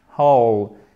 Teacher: On ne prononce pas le W. Pas toujours, mais la plupart du temps. Et on commence par notre H, whole. Et ici, on a une diphtongue.